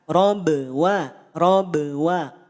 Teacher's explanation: ada huruf ba harakat sukun ba sukun lihat rumusnya nol harakat qolqalah pantulkan Maka jangan dipanjangkan qolqalahnya nol harakat saja tidak dipanjangkan